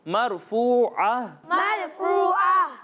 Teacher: ہا کو جو ہے وہ ہم حلق کے نچلے حصے سے پڑھتے ہیں